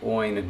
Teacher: It's supposed to be a palatal nasal, not an alveolar nasal.